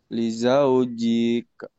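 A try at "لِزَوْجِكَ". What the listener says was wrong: Kenapa panjang? Nggak ada yang panjang. Nggak ada. Ya, jangan dipanjangin.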